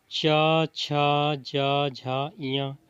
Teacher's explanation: च छ ज झ इयां तो इसमें तालु का सहारा लेना पड़ेगा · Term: तालव्य